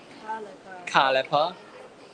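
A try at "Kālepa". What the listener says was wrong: There's an accent above the A.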